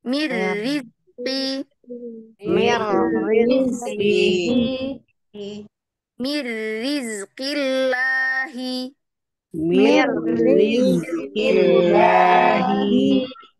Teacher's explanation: Roknya di sini meskipun dia bertasydid ya, tapi roknya takrirnya itu ya, takrirnya itu sempit. Jadi lidahnya nggak menggulung.